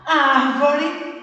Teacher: Árvore, o ar, é a sílaba tônica.